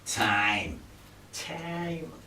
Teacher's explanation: All New Yorkers, they go in their nose. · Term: New York accent